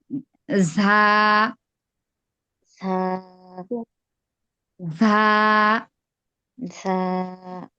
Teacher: জিব্বার আগা নিচের দুই দাঁত, মানে সামনের যে নিচের দুই দাঁত আছে এই দুই দাঁতের আগার সঙ্গে লাগবে।